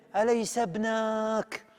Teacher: غيرت التنغيم شوية، أليس ابنك؟ ومدت فتحة النون جدا